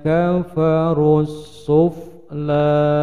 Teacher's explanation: Langsung pada sin alif lam samsiah, alif lamnya dilewati tidak terbaca, dhammah langsung pada sin